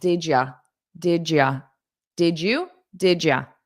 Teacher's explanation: some native speakers change you to yah, which is more unstressed, more casual